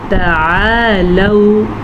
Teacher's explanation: عین کو واضح کر کے پڑھیں اور یہ حلق کے درمیان سے نکلتا ہے